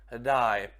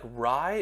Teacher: The main nuance here is that R sound is not a R, it's like a D.